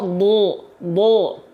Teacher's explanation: bunyi vokal A-nya kita dengar menjadi bunyi vokal O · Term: huruf dhad